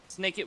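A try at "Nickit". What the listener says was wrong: There's no S. It's Nick.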